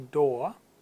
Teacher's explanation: the British pronunciation of door again you drop the R